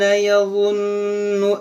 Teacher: यहाँ पर आप गौर करें, यहाँ ज़ा है, नून मुशद्दद है, ज़ा को नरमी से पढ़ेंगे, नून में गुन्ना करेंगे